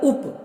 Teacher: जब हम उप कहते हैं तो हमारे होठ बंद हो जाते हैं, इनका उच्चारण स्थान ओष्ठ है।